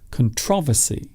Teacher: So the emphasis or stress is on the second syllable.